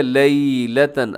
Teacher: آگے دیکھیے لیلتن، اسے لیلتن یہ آپ نے پڑھنا کیونکہ یا لین ہے، اور اسے مجہول پڑھنے سے آپ نے بچنا ہے۔ لیلتن ثم، اب یہاں پر اخفا ہو رہا ہے، لیلتن کے آخر میں تا کے اوپر تنوین ہے، اور اس کے بعد ثا آ رہا ہے جو کہ حروف اخفا میں شامل ہے، تو آپ نے یہاں پر آواز کو ناک میں چھپانا ہے۔